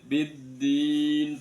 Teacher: Alif lamnya tidak terbaca masuk ke dalam dal tasdid. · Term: idgham syamsiyah